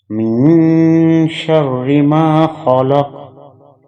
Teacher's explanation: میم کے بعد جو نون ساکن ہے اس پہ اخفا ہوگا کیونکہ شین حروف اخفا میں سے ہے